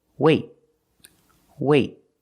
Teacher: I don't say wait. I don't release the T. It's a stop T. I stop the air. I stop the air with my tongue in the T position.